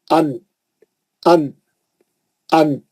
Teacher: जबान की नोक जाके मसोड़ों को लग रही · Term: नून